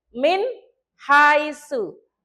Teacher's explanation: Ada nun sukun bertemu dengan huruf ha. Jadi bacanya nun sukun itu jelas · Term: Idhar halki